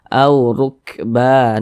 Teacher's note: harakat dah huruf ro memiliki tanda baca domah maka dibaca takhim dibaca tebal sehingga pangkal lisan kita itu naik terangkat ke atas ketika Kita mengucapkannya